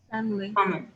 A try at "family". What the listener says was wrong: The I does not sound.